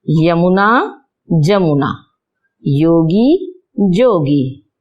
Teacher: य वर्ण का उच्चारण ज करना, तद्भव में ज हो जाता है य वर्ण का।